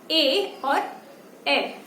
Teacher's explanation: अब आते हैं कंठ प्लस तालु, मतलब गले में भी आवाज आएगी और जीभ जो है हमारी वो ऊपर तालव्य से लगेगी